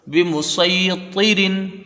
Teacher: را کے نیچے دو زیر کی تنوین، را باریک ہوگی